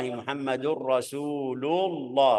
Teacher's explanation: Rasulullah Muhammadur Rasulullah rasulu sebelumnya dhamma, jadi ucapan lafzul jalalah tebal